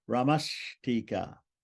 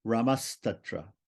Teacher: In each case, the Visarga becomes a sibilant that corresponds to the following letter.